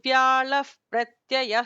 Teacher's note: So here visarga followed by pa for a pratyaya will again become an F kind of a sound.